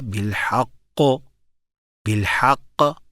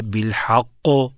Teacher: قاف موٹا ہے لیکن آواز کھلی ہے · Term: کھلی آواز